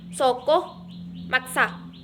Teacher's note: huruf S merupakan kontoid frikatif, lamino-alveolar dan tidak bersuara